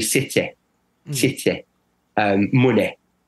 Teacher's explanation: they have a short, a clipped E at the end of words like city